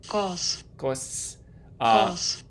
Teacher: It might sound like it has a little higher frequency than a regular S in English. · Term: dental